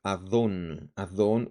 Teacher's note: La palabra Adón, Adón, un señor, estado absoluto, pero cuando va acompañado, cuando está en un estado constructo, en una construcción y va al inicio, tiene que estar en construcción, así que cambian las vocales. Mira, la entonación de Adón estaba en la segunda sílaba, on.